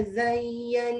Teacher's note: Nun satu wajib bergunnah dengung sikit